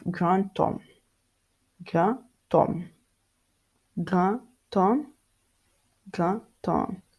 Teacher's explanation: The D in front of the silent H, it becomes T